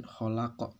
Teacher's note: hurufnya qaf yang diwaqafkan maka qalqalah kubro